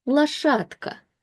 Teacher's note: So the c- will read as tka and when we put the word together a is stressed which means this o turns into a